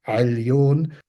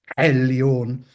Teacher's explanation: And that's a much, well, what could be described as a much harsher sound, like ah. So you can go either weak pharyngeal approximant, Ailion, or the strong epiglottal trill variant, Ailion.